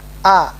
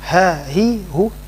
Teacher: Hamzah a dia tidak mengeluarkan desis tidak mengeluarkan udara